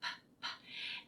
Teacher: You shouldn't feel your voice box. P. Um, so make sure that you don't add the schwa to the end.